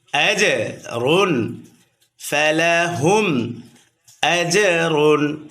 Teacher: আজরুন জিম কলকলার হরফ প্রতিধ্বনি আওয়াজ হবে।